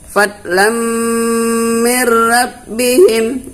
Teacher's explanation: Jadi di sini baris 2 ketemu dengan mim, dia hukumnya idgham. Jadi kita bacanya harus berdengung.